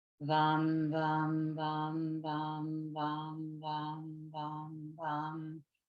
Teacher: So the one that is for the sacral chakra is VAM. So V, really feeling the vibration between the teeth and that lower lip. You say VAM in mantra fashion.